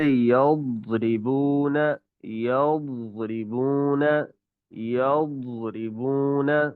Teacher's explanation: واد کی آواز بہت موٹی ہوتی ہے اور جماؤ کے ساتھ نکلتی ہے، اور منہ کے دائیں بائیں دونوں طرف سے نکل سکتی ہے، چاہے دائیں کی طرف سے نکل آئے چاہے بائیں طرف سے نکل آئے، یا بیک وقت دونوں طرف سے بھی نکل آتی ہے۔